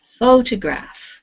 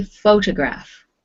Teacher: the stress is on the first syllable in this word photograph